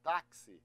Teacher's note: x que pode às vezes ter som de KS que a gente chama de difono